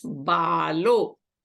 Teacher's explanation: visarga is replaced by U now this U and this ah so a plus u there is a vowel sandhi and becomes o